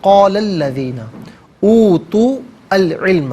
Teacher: قال میں لام پر زبر ہے, اس سے الذین کے لام کے ساتھ ملائیں گے, درمیان میں سے الف حمزہ کو حذف کریں گے